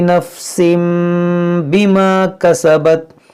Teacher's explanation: यहाँ देखें तनवीन के बाद हरफ़ बा है, तो यहाँ पर इक़लाब का कायदा लगेगा।